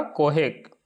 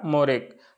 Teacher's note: अ की जगह नॉर्मली ओ का उच्चारण हो रहा है यानी ह्रस्व ओ का।